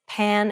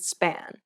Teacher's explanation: hand over your mouth and compare the words pan and span note how there is a burst of air in the first p but none in the second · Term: aspiration